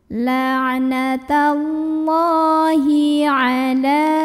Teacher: Maka cara membunyikannya adalah dipanjangkan lamnya ini dua harokat. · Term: mad asli